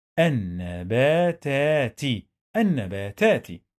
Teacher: We don't pronounce lam. We pronounce noon two times. The first time was sukun, the second time was fatha.